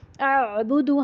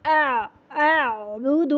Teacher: حمزہ سخت اور عین جو ہے وہ نرم. حمزہ کو سختی سے اعبد، آخر میں عین میں نرمی آ جائے گی.